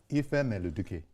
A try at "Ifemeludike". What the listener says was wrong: Dike. You say Duke, so that Duke.